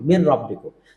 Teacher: মিমের জের সরাসরি র তাসদিদকে ধরলো, তাহলে মির হয়ে গেল, মিম রজের মির, রব্বিকুম, মির রব্বিকুম। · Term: ইদগাম বালা গুন্না